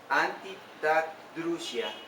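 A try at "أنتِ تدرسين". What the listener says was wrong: Anti tadrusin. Una C con vocal I, ¿cómo se pronuncia? Con una I vocal larga. Sí. Con una N al final.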